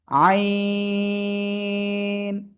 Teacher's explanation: গলার মধ্যখান থেকে চার আলিফটানে উচ্চারণ করব।